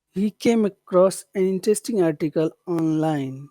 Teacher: you'd start it high, but you have to finish it kind of low because it's the end of a phrase.